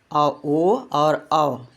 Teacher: दोनों होठ का भी सहारा लिया जा रहा है और कंठ का भी। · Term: कंठोष्ठ